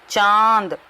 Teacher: जब हम बोलते हैं तो हवा जो है मुंह से भी निकल रही है और नाक से भी निकल रही है, इसलिए ये अनुनासिक शब्द है, और यहाँ पर हमने चंद्र बिंदु लगा दिया है।